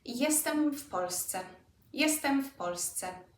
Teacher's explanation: Sounds very much like an F, doesn't it? Again, because of the P.